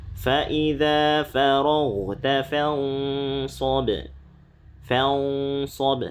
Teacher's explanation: Nah, ini pertama nun sukun bertemu dengan shad. Nah, kalau shad ini ikhfanya tebal ya. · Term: ikhfa tebal